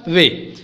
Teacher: दंतो ओष्ट से होता है वे का